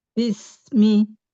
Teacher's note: dialirkan rokowahnya, huruf sinnya, suaranya dipanjangkan.